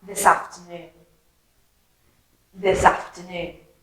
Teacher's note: that s from this and the af from afternoon joined together